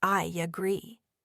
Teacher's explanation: Or take I agree. Often you might detect a delicate Y sound appearing between I and agree, resulting in something like I agree.